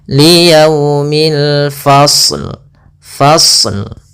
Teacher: alif lam qamariah yaitu alif lam yang kita tulis dan kita baca dengan jelas suara lamnya